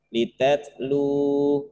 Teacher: Jadi lu-nya panjang atau pendek? Panjang, 2 harokat. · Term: mad tobi'i